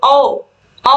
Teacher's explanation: कंठ और ओष्ठ दोनों का प्रयोग हो रहा है, तो इसलिए इसको कंठोष्ठ कहेंगे · औ आप बोल के देखोगे तो आपको पता चलेगा इसमें कि कंठ और ओट दोनों का प्रयोग हो रहा है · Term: कंठ होष